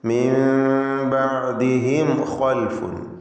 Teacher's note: ബഅദിഹിം എന്നതിൻ്റെ അന്ത്യത്തിലൊരു സാക്കിനത്തായ മീമുണ്ട്. അതിന് ഇൽഹാർ ഷഫവി എന്ന നിയമമാണ്. മണിക്കാതെ വെളിവാക്കണം.